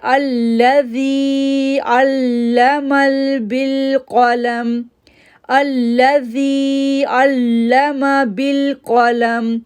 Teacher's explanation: زی کو کھینچا، نرمی بھی دکھائی اور کھینچا بھی 2 سیکنڈ کے لیے کیونکہ یا ساکن سے پہلے زیر ہے۔